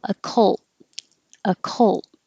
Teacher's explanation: the T stops the airflow from the L